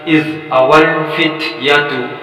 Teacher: فت کی آواز ادا ہونی چاہیے جسے ہمس کہا جاتا ہے